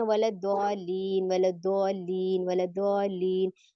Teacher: लाम को हमने नब्र करना है, लाम की आवाज को थोड़ा सा हमने लाउड करना, थोड़ा सा ऊंचा करना है